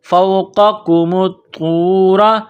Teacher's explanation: را کے اوپر زبر تو موٹا کرنا ہے